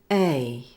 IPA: eɪ